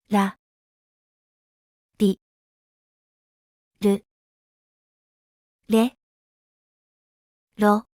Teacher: Lightly touch the back of your top front teeth with the tip of your tongue without curling it back as in English. Make a quick and gentle flap of the tongue against the teeth. Unlike the vibrating English R, the Japanese R has minimal vocal cord vibration.